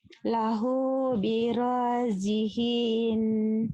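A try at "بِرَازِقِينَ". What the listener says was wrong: Jiqin. Bukan jihi. Jiqi.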